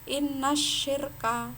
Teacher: bukan innal syirka tapi langsung menuju ke shin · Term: al-syamsiyah